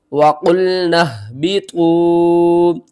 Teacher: نون کو ہم نے ہا کے ساتھ ملانا ہے، اور نون کے آگے یہ جو 2 الف آ رہی ہیں نا، ان دونوں کو آپ نے چھوڑ دینا ہے۔